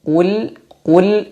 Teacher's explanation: memang harakatnya damah qu qu Kemudian bertemu dengan lam sukun maka mulut agak ditarik sedikit Qul Qul untuk membantu menipiskan lam dan hati-hati lamnya jangan sampai dipantulkan caranya dengan menyempurnakan sifat-sifatnya sifat